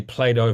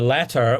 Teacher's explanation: it's a thing about American English often a t between vowels becomes a d or something like it